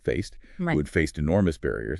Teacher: That ed sounds like a t here.